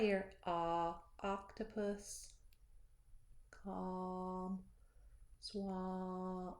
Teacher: our mouth is big and round, low and open.